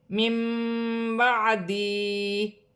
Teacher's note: نون ساکن کے بعد با آ رہی ہے، یہاں چھوٹی سی میم لکھی ہوئی ہے، نون ساکن کی آواز کو میم سے بدل کر غنے کے ساتھ ادا کیا جائے گا، اسے اقلاب کا قاعدہ کہتے ہیں۔